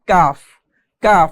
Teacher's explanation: জিহুব্বার গড়া থেকে একটু আগে বাড়িয়ে তার বরাবর উপরে তালুর সঙ্গে লাগিয়ে পড়তে হয় কাফ কাফ জিহবার গড়া থেকে একটু সামনে দিকে